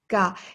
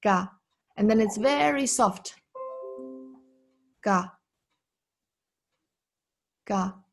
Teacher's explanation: when I say ga, there is no air coming out from my mouth